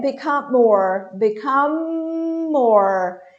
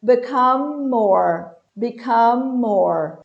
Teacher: M. Lábio com lábio. Os lábios se cerram, se tocam.